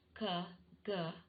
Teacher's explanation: the back part of the tongue articulates with the soft palate so it is called velar sound